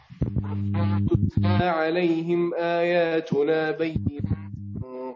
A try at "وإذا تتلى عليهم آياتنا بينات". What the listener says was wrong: لا تهمس التاء المتحركة. وإذا تتلى عليهم آياتنا لا تهمس التاء المتحركة.